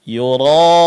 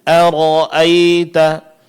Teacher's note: huruf ra di sini ditebalkan karena masing-masing huruf ra berbaris fathah.